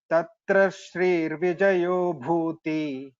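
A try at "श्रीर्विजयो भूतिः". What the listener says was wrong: Shrir Vijayo Bhutihi. Here we chant the Visarga completely.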